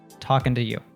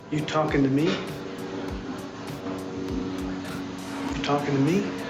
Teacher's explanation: It's a function word, so it reduces to an so we would just to. And we have an American T that happens there with talking to you. So the T in to actually becomes a d. So talking to you.